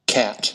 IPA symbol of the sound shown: æ